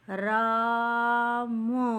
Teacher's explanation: र के साथ भी आ निकल रहा है, बड़ा आ निकल रहा है, और म के साथ छोटा अ निकल रहा है